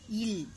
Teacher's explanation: மேல்வாய் பல்லின் அடியை நாக்கின் ஓரங்கள் தடித்து நெருக்குவதால் பிறக்கின்றன இல் இது மேல்வாயை நாக்கின் ஓரங்கள் தடித்து தடவுவதால் பிறக்கின்றன.